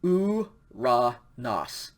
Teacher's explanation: this one has a smooth breathing mark over the upsilon, over the diphthong, omicron, upsilon. And so that diphthong is pronounced oo. So this is pronounced uranos.